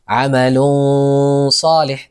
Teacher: الصاد من كلمتين أيضا، عمل صالح، طبعا هذا تنوين، عمل صالح، تكون غنة مفخمة، ولا نضع اللسان في الحنك الأعلى، يعني لا نلصق اللسان بالحنك الأعلى